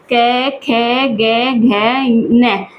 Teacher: क वर्ग पूरा हमारा कंठ से बोला जाता है